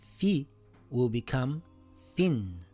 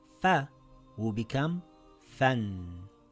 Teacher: This is called the tanween, and all you do is add a n sound to the vowel.